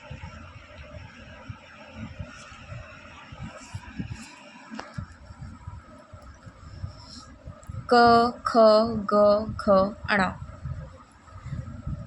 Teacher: क ख ग घ ण कंठ। क का उच्चारण करने के लिए हम कंठ का उपयोग करते हैं। कंठ गला।